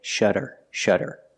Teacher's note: the Double D makes a fast D sound